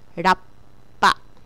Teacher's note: small tsu is a silent pause in the middle of the word